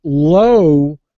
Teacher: we do hit the w we round our lips